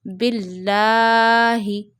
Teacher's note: then you read lam of Allah in a thin voice in Quran, and you will stretch lam of Allah because of this vertical fatha on it up to one finger.